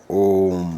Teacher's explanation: इस स्वर के उच्चारण में ह्रस्व स्वर से तीन गुना समय लगता है इसलिए आगे तीन का अंक लिख देते हैं जैसे ओम अच्छा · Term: प्लुत स्वर